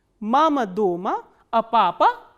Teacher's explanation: in the first part the intonation starts from the medium pitch it comes down and then again it rises up and then comes down so this is called the fourth international construction I see four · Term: incomplete question